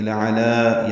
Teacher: لَعَلَى دونوں لام باریک ہے, عین وسط حلق سے ادا ہوگا. دوسرے لام کو دو حرکات لمبا کریں گے